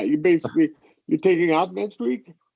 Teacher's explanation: At the end, you're going up because you're turning it into like an open question, kind of a yes, no question. So you're turning the statement into a question by going up in pitch